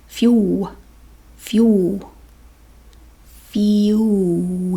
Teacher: it's like f-y-o-o fuel and the l it's just w